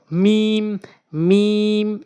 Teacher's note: মিম দুই ঠোঁটের শুকনো অংশ মিম মিম এভাবে উচ্চারণ করবেন এরপর আসুন নুন মুখ গোল করে